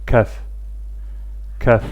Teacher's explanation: Bu hərf dilin kökündən ortasına doğru olan hissəsini yuxarı damağa toxundurmaqla tələffüz edilir. Azərbaycan dilində olan k səsinin oxşarı və incə formasıdır. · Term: kəf hərfi